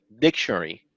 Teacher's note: we put more energy or more efforts or more stress on the on the first syllable which is dick so you can say dictionary you don't say